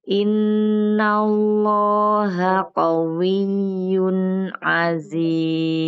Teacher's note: Tanwin bertemu dengan huruf ain dibacanya idhar.